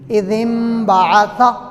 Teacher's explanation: نون ساکن اور نون تنوین کے بعد با آ جائے, اس با کو میم سے بدل لینا. اب یہ ہے تو اذن اذن ہے, لیکن با کی وجہ سے اب اس کو میم پڑھیں گے. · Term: اقلاب